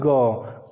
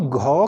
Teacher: और जब हम घ का उच्चारण करते हैं तो घ का साउंड जब बाहर की तरफ निकलता है तो उसके साथ वायु भी अधिक मात्रा में बाहर निकलती है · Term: महाप्राण